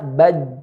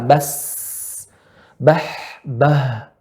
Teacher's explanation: Rapat pada pita suara. Udara tidak keluar. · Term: huruf jahrun